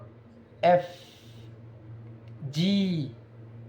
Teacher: এফ উচ্চারণ করার সময় উপরের দাঁত এবং নিচের ঠোঁট এর মাঝখান দিয়ে শ্বাস বের হবে